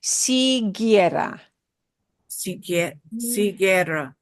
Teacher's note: Those two combos, G-U-I and G-U-E, will put the G into a g hard sound, and the U will be silent. · that U is silent. It's one of the few times that a vowel goes silent. And it goes silent because the U stands there to say, oh, normally if G was next, if it were next to I, it would be a he sound. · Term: hard G sound